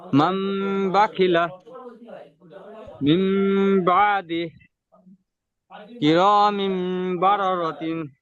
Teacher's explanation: নুন সাকিন অথবা তানবিনকে মিমের দ্বারা পরিবর্তন করে পড়তে হবে। নুন গুন্না ও ইকফারের সঙ্গে পড়তে হবে। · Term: ইতলাব